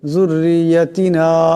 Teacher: নুনের উপর মদ আছে, আওয়াজটা লম্বা করিয়া পড়তে হবে